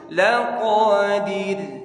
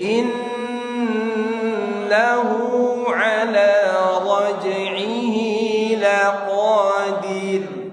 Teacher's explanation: Raj'ihi laqadir, bukan diok, dir tipis, ra tipis. Dir, ya bibir nggak boleh lepas dulu sebelum ro selesai suaranya. Kalau sebelum ro selesai dia akan tebal. Laqadir dilepas maka tebal.